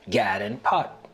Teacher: The lot-trap vowels are reversed for God and pat to sound like gad and pot